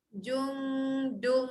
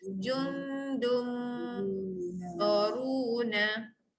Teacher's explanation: 2 kali dengung dekat belakang ni. Okay, yang pertama jung naik lidah atas, dung masuk bunyi mim, rapatkan bibir.